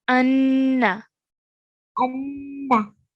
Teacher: Make sure when you say this, you're making a nasal sound, the gunna sound